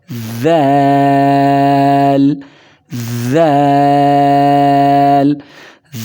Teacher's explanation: ذال ادا ہوتا ہے زبان کی نوک سامنے والے دانتوں کے کناروں کے ساتھ لگنے سے